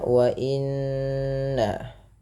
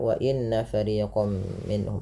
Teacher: tahan bunyi suara nun yang berharokat tasydid karena ia dikategorikan bacaan gunnah. Beberapa di antara kita kadang terlupa di dalam membaca gunnah, tidak menahan bunyinya.